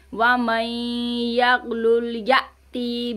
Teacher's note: यहाँ पे अलीफ पर हम झटका देंगे। ठीक है, हमज़ा साकना है।